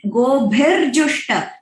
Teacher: गोभिजुष्ट नहीं है, गोभिर र है वहां पे।